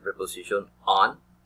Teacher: Finally, as in the preposition on, the mouth is open, and the sound comes from the back part of the mouth